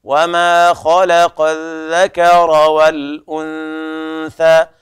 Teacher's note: الأنثى إخفاء النون إخفاء بغنة عند الثاء · والذكر الذال أيضا من طرف اللسان، كذلك الراء حكمها التفخيم